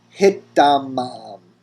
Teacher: the tav of the prefix assimilating into the tav that is the first radical of the root